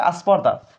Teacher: স্পর্ধার আগে যে স্বরে আ শব্দটা যুক্ত হলো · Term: স্বরের আগমন